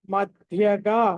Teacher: ధ అన్నది మహా ప్రాణం కాబట్టి ఒత్తి పలకాలి